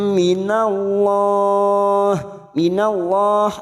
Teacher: mim lam mendengung selama dua atau tiga harakat lam minallah minallah lam jalalah yang sebelumnya fathah kita baca tafkim